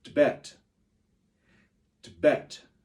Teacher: you almost whisper the tip and you say bet loud